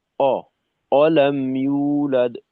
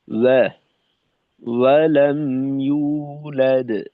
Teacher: প্রথমত, ওয়াও এর মাখরাজের জন্য ঠোঁট গোল করা, দ্বিতীয়ত ওয়াও এর জবরের কারণে ঠোঁটটাকে খুলে দেওয়া।